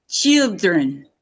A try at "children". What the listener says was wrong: Children. Make that E longer. Hold it longer. Children. Yeah, this is when we talk about how long you hold something, the duration. I want you to hold that E sound a little bit longer.